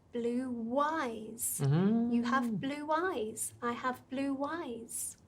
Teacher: When the first word ends in one of these 3 vowel sounds, oo, ow, o, and the next word starts with any vowel, doesn't matter, can be anything as long as it's a vowel, we add the sound w.